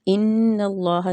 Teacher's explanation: نون مشدد ہے، اس پہ غنہ کرنا ہے۔ غنے کی مقدار ایک الف پڑھنے تک ہے، اور اللہ کے لام کو پر پڑھیں گے کیونکہ پیچھے والے حروف نون پہ زبر ہے، ٹھیک، اس وجہ سے اس کو پر پڑھا جائے گا۔